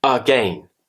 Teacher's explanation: The A becomes a schwa sound.